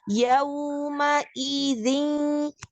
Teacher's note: Jadi iding itu jangan keseret i-nya. Jadi tetap kita harus mengucapkan hamzah berharokat kasroh.